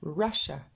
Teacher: Et finalement, le i, il disparaît complètement. Cette terminaison en ia, on retrouve notre e du début.